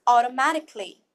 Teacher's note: we will soften up the T as well